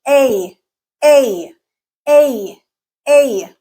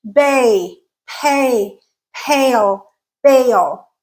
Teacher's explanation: so it has the a and the if sound together so your tongue is moving from a to e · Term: diphthong